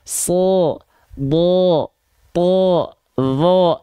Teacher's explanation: Kalau huruf tebal ketika fathah bunyi vokalnya bukan A, kita ingatkan, tapi vokalnya condong ke vokal O.